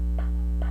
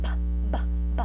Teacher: It is very easy to recognize the absence or presence of voicing in these sounds by feeling the larynx when pronouncing syllables such as p and ba. Pa will produce much less vibration than ba. With these two consonants differ in voicing the p and b, but they are identical in terms of their place of articulation.